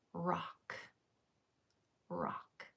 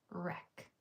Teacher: Say rock, but change the ah to an eh. Wreck. So, rock changing the ah to an eh is wreck.